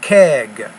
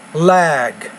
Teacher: the vowel sound before the voiced consonant should be a little bit longer